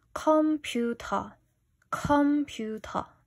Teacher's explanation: every single consonant here is aspirated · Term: aspiration